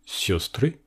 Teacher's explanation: dans ce mot l'accent est sur le yo